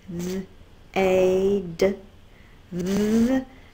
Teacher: My tongue is out, my voice is on. That's the voiced TH. It's a digraph and makes one sound.